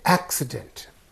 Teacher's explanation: is also the suffix so the syllable preceding the suffix then when it is used as a noun the stress is on the first syllable